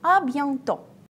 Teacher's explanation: we don't pronounce T at the end